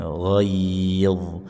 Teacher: menaikkan pangkal lidah. Ini lidah dekat tenggorokan kita naikkan ya bunyinya tebal. Jadi bukan ghaid dz ya tebalkan lagi bagian lidah bagian pangkalnya ghaid. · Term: huruf dho tebal